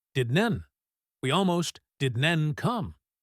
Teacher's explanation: We almost didn't come. Didn't the T is usually stopped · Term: negative contraction